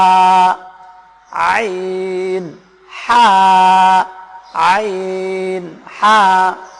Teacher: বড় হা এই হা টা আপনাকে কণ্ঠনালীর মধ্যখান থেকে উচ্চারণ করতে হবে ছোট হাটা কণ্ঠনালীর শুরু থেকে উচ্চারণ করতে হবে আমি আপনাদেরকে এখন